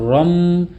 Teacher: এই নুন সাকিন এবং এই তানভীন কে পরিবর্তন করে ছোট্ট মিম উচ্চারণ করবেন গুন্নাহ সহকারে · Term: ইকলাব